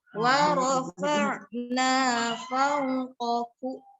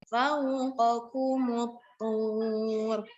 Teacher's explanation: qafnya kuat, lalu bertemu kaf yang hamas.